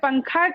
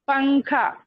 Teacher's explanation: نون کو slightly pronounce کر کے آگے بڑھ جاتے ہیں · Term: اخفا